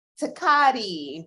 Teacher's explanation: they're producing a tongue tip sound where they're lifting their tongue up in the beginning with the letter T